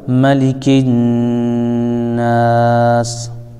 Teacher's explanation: ساکن ہو جائے گا، تو یہ مد عارض کہلائے گا۔ اب اس کو 1 الف 2 الف 3 الف بھی کھینچ سکتے ہیں